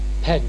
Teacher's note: a slight D sound precedes the end